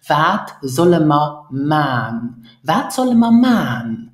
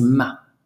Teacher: as man is ending in n, often we drop the N because of the N rule, and then you will hear this ma.